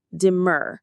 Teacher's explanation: The stress is on that second syllable, demur. It rhymes with words like fur or sir.